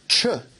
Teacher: So the affricate ch represents t plus sh, just as the affricate j results from d plus j.